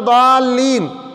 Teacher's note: اس کو ضاد ہی پڑھنا ہے، اس کا مخرج ہے زبان کی کروٹ اوپر کی 5 داڑوں کی جڑ سے لگے تو پھر ضاد نکلے گا، اور اس کو موٹا ہی ادا کرنا ہے